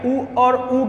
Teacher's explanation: उ और उ क्या हैं, वृत्तमुखी हैं और जो ओष्ठ की सहायता से बोले जाते हैं।